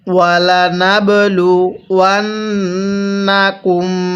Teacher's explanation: তাহলে ওয়ালা নাবলু ওয়ান্নাকুম, এই যে ওয়াওকে নুনের সাথে লাগাবো, ওয়াও নুন জবর ওয়ান, এই নুনের মধ্যে লাগিয়ে গুনাহ করব, কারণ মিমে নুনে তাসদিদ হলে সেখানে গুনাহ করা ওয়াজিব হয়ে যায়। নুনের উপর এই যে তাসদিদ চিহ্ন, এই জন্য আমরা অবশ্যই নুনটিকে গুনাহ করে পড়ব। এরপরে এই মিমের মধ্যে আমরা গুনাহ করব।